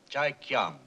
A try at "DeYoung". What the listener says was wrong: The name is DeYoung, sir. It's pronounced with a D.